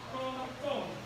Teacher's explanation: 表示它声音很短促，很高，很短促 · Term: 第8声